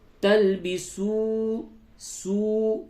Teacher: یہ واو مدہ ہے، اس کو تھوڑا سا کھینچیں گے